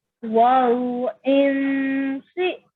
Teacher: When you see this noon sound, it has to be pronounced for 2 seconds, but it's a partially hidden noon